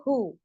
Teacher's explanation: ये गटरी वाला ह है, और उस पर पेश होता है तो हु। हाँ, इसमें हल्का सा झटका आएगा